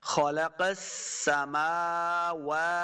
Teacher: تو صحیح طریقہ کیا ہے، خلق السماوا، یعنی میم اور واو دونوں کو لمبا کرنا ہے، سین کے اوپر صرف زبر ہے، سین کو لمبا نہیں کریں گے